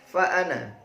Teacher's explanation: Ditulis panjang tapi dibaca singkat. Namun jika Anda berhenti (waqaf), maka bacaannya menjadi panjang.